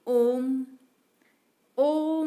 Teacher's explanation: प्लुत स्वर की पहचान के लिए स्वर के पीछे संख्या 3 का चिन्ह लगाया जाता है। जैसे ओम, ओम बोलने में ज्यादा समय लगता है, यहाँ पे ओ प्लुत स्वर है।